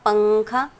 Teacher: دیکھیں گے حروف اخفا 15 ہے، اگر تنوین یا نون ساکن کے بعد اخفا کے ان 15 حروفوں میں سے کوئی بھی حرف آتا ہے تو نون کی آواز کو ہم کو ناک میں چھپا کر پڑھنا ہے۔